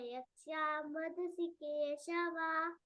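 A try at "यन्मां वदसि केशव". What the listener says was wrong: అది ఎందుకంటే కనిపించేది ఎప్పుడు మనకు ప్రింట్ స ను న ఒకటే రకంగా కనిపిస్తుంది కదా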